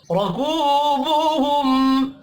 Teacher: را کو زبر کی وجہ سے پر پڑھیں گے ، کو واو مدہ ہے، ایک الف کے برابر کھینچ کر